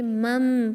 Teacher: آپ نون ساکن کے بجائے میم کو پڑھیں گے کیونکہ نون میم میں کنورٹ ہو جائے گا. اب آپ اس کو من بعثنا نہیں پڑھیں گے، مم پڑھیں گے میم کو وتھ 2 کاؤنٹ غنہ انشاءاللہ. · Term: اقلاب